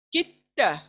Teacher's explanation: First मिसाल देखें कि त के पर डायरेक्ट की से त के पर डायरेक्ट मिलाएंगे, दाल को वहीं छोड़ देंगे।